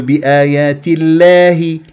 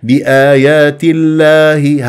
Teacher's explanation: ترقق اللام من غير ان اميل الالف